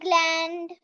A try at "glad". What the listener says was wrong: कहाँ उच्चारण गलत किया है? ग्लैंड नहीं, ग्लैड।